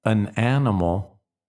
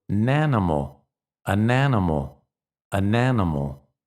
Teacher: say the N with the next word